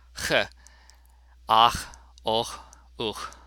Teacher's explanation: CH has two different values depending on the preceding vowel. After A, O, and U, it is a guttural sound.